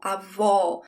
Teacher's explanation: There's an open sound for this O.